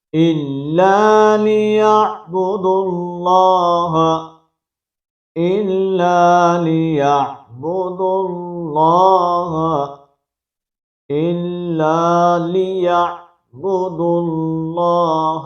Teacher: اور لفظ اللہ کی لام کو ہم پر کر کے پڑھیں گے، اس واو کو نہیں پڑھیں گے